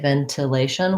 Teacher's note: So when I was first reading yours, I said ventilation, which is a correct and acceptable way to say it, ventilation with an aspirated T. But then when I repeated myself, I said it more typical American way, ventilation, ventilation.